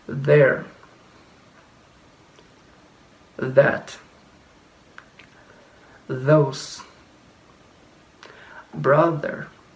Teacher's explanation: this sound require vibration of the vocal cord